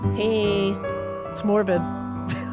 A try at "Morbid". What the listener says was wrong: It sounded like you said smorbid.